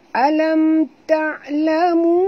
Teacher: kerana pertemuan waw mat dengan hamzah, ya, jadi bacaannya panjang 4 hingga 5 harakat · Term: mat jaiz